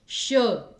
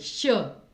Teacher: इसका उच्चारण स्थान तालु होता है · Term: संघर्षी व्यंजन